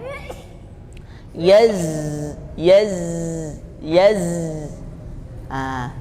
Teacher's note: zai ini tidak banyak ya hembusan nafasnya